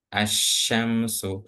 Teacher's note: alif dan lamnya enggak dibaca tapi langsung ke syin ke huruf syinya ke huruf yang bertasydidnya itu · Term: syamsiah